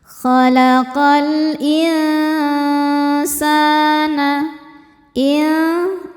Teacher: Karena nun sukun bertemu sin. Cara bacanya nun disamarkan ke sin disertai dengungan. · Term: ikhfa hakiki ausat